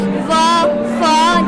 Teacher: Labio means lips and the dental means teeth. The sounds are produced by the help of our upper teeth and the lower lip. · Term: labiodental